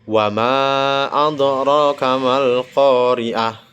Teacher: Huruf dal sukun yang berada di tengah dibaca memantul dan diberikan tekanan tipis atau ringan. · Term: qalqalah sugro